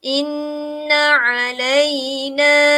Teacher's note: panjang 2 harakat kerana terdapat huruf mad di sebelah huruf na